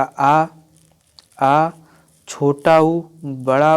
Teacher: एक तो अग्र स्वर अर्थात जीभ के अगले भाग से, मध्य स्वर जीभ के मध्य भाग से और पश्च स्वर जीभ के पिछले भाग से